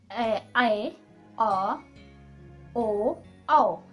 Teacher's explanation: इसमें हमारा जो मुख है वो अभी तक जो दोनों हमने देखा उनमें से सबसे ज्यादा, यानी हमारा मुख आधे से ज्यादा खुल जाएगा, इसीलिए इसे कहेंगे अर्ध विवृत स्वर